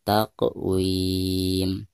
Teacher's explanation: Dihukumi qalqalah sugro dan dibacanya harus dipantulkan dengan suara pantulan yang tipis